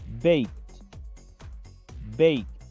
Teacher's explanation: Si se dan cuenta, esta palabra termina con una E, pero como la última consonante es sorda, la letra K, se pronuncia baked, como una T al final